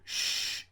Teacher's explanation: the tongues push towards the bridge of the mouth and the air is forced through it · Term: fricative